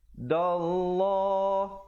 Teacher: lafzul jalalah jika datang sebelumnya baris fathah dibaca tebal.